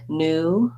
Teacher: In American English, words like new and the other new, many words with the oo just have the oo without the y. In British English, they may say new just like they say few.